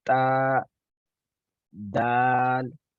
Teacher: जुबान की नोक सामने वाले दांतों से यानी कि सनाया से मिल रही है, लेकिन ऊपर वाले सनाया